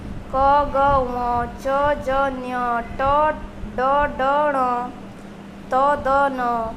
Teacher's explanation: ये है अल्प प्राण। इनके उच्चारण में फेफड़ों से बाहर निकलते वाली वायु की मात्रा कम होती है।